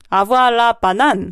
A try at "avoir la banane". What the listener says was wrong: 그렇죠.